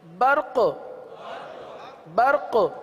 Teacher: قاف کو باقی رکھنا اسی صورت میں ہوگا کہ آپ قلقلہ ادا کریں. آپ قلقلہ ادا کریں، قلقلہ ادا کریں گے قاف باقی رہے گا.